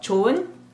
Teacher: H underneath is almost silent, very subtle.